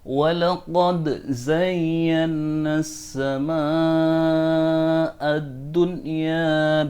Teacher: Ada qad bertemu dengan za, maka qad dalnya wajib dibaca idhar atau harus dibaca jelas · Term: dal qalqalahnya